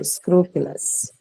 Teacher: The last one that you hear uh, in the word scrupulous is the schwa, right? The unstressed vowel sound